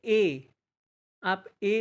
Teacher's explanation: किसका संयुक्त है अ से हैं और ई से हैं तो अ हमारा कंठ से बोला जाता है ई हमारा तालू से बोला जाता है तो इनका उच्चारण स्थान कंठ तालव्य होगा